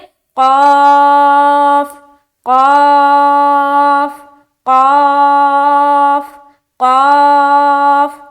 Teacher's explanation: موٹا کر کے پڑھیں گے کیونکہ یہ موٹے حروف میں سے ایک ہے, حروف مستعلیہ میں سے ایک ہے